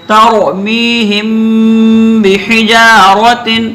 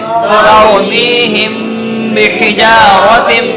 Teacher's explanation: جب ہم میم کا اخفا کر رہے ہیں تو میم کا جو مخرج ہے یعنی دونوں ہونٹ، تو دونوں ہونٹوں سے دونوں ہونٹوں کو ملا کے رکھیں گے اور ایک الف کے برابر ٹھہریں گے تو یہاں اخفا ہو جائے گا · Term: میم ساکن کے اخفے